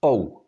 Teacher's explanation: they are pronounced as if we want to pronounce one smooth sound so we Glide from o to U in one sound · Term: dongs